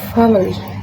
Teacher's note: The middle vowel is deleted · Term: vowel deletion